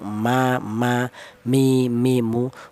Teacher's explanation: kalau huruf mem dan huruf ba ini dihasilkan dari kedua bibir yang rapat